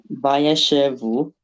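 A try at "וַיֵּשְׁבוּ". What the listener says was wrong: Again, there's a shva there.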